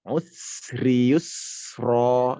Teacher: Jadi dipanjangkan saja sinnya karena sin ini memang memiliki sifat sofir, ada desis.